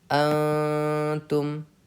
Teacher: اس میں ہمیں نون کی آواز کو ناک میں چھپا کر پڑھنا ہے اور ایک الف کے برابر اخفا کرنا ہے